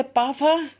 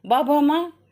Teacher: पा फा ये अघोष, बा भा मा सघोष